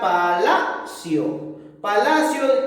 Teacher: tiene la mayor fuerza de voz en la penúltima sílaba. Por eso sería una palabra grave